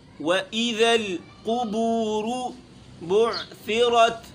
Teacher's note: قاف موٹا ہے، با باریک ہے، اور قاف کے اوپر بھی پیش ہے، اور با کے اوپر بھی پیش ہے، واو کے اوپر بھی پیش ہے۔